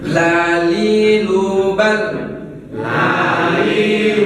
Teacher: bunyi huruf lam keluar dari tepi lidah sebelah kiri ataupun kanan hingga penghabisan ujung lidah. Nah, serta menepi dengan langit-langit mulut atas.